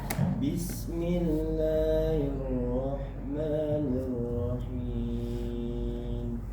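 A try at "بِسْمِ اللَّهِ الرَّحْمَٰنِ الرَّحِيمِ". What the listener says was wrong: Mulut ketika membaca Allah tidak perlu monyong. Kalau saya lihat tadi seperti ini. Kalau baca. Nah, jadi bacanya Bismillahirrahmanirrahim.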